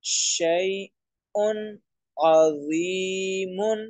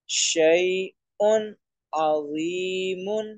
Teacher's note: ان حمزہ پر جو 2 پیش کی تنوین ہے ان کی آواز کو واضح کیا جا رہا ہے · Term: اظہار